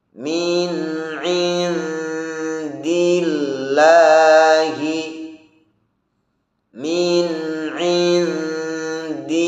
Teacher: Huruf dal seperti sebelumnya tidak boleh dibaca hams atau tidak boleh ada desisan pada huruf dal. · Begitu pula ketika mengucapkan huruf dal dari kata indillah, perhatikan dalnya harus dijaga sifat jahr dan syiddahnya. Jangan sampai kemasukan sifat hams pada huruf dal.